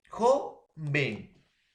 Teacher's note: Lleva la mayor fuerza de voz en la penúltima sílaba